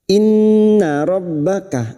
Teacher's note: nun yang bertasdid gunna musyaddadah kita dengungkan selama 3 harakat.